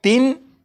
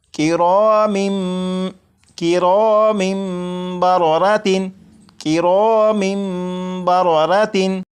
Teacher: तनवीन के अंदर जो नून साकिन की आवाज़ होती है उसे मीम से बदलकर गुन्ना करके पढ़ेंगे। जैसे यहाँ पर लिखा है तिन, इसे पढ़ेंगे तिम तिम। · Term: इकलाब